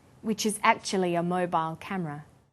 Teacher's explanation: This is linking type 1, vowel plus y plus vowel. Actually ends in an e vowel sound, and the next word begins with a schwa sound. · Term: y linking